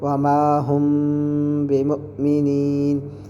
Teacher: اگر میم ساکن کے بعد با ہے تو وہاں غنہ کے ساتھ اخفاء ہوگا، اس کو اخفاء شفوی کہتے ہیں۔